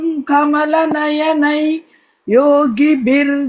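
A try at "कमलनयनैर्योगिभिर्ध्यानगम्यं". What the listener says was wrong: अत्र नयनै इति उक्त्वा मा स्थगयतु कंटिन्यूस् अत्र ओके नयनै योगिभिर्ध्या इति नयनै योगिभिर्ध्या न ओके एवं न कमलनयनै योगिभिर्ध्या इति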